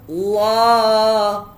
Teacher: Baris atas khas untuk kalimah Allah. Hukumnya mad asli, dua harkat.